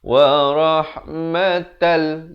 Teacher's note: Di sini idgham bila gunnah, masuk tanpa dengung. Asalnya wa rahmatan, jadi wa rahmatal.